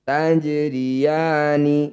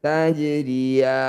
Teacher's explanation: Ya panjangkan 6 harokat. Huruf yang terakhir sukunkan. Tajriyani. Ketika dihentikan. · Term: mad alif lisukun